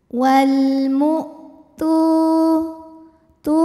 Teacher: Hamzah suaranya tertahan saat ditekan terhadap makhrajnya karena Hamzah ini punya sifat namanya syiddah kuat ya sandaran terhadap makhrajnya kuat sehingga semakin ditekan semakin tertahan